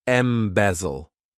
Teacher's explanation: this verb has 3 syllables, and the stress is on that second syllable.